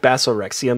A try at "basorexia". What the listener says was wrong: Basorexia, bass, that first part's actually pronounced bass. It's Basorexia.